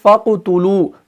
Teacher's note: تو قوف اس کے اندر آ گیا، بیچ میں آ گیا اور اس قوف کے اوپر سکون ہے، جزم ہے، تو یہاں پر جو قلقلہ ہوگا وہ بالکل ویک ہوگا